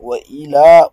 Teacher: Wa ila, prolongation de deux temps